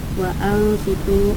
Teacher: Nah, di sini nun matinya bertemu dengan sod, yaitu huruf ikhfa, maka dibaca dengan samar.